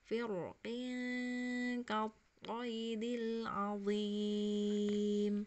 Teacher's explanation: Jadi kalau wasol roknya dibaca tebal ya. Kalau wasol kalau menyambung bacaan dibaca tafkhim roknya.